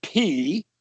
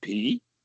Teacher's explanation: It's got a rising tone